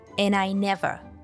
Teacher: And I never want to see those shoes again. What happens here is we drop the D sound from and link 3 words together.